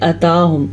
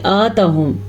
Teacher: اس کو لمبا کریں گے 2 سے 3 سیکنڈ تک، یعنی کہ بما آتاہم. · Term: کھڑی زبر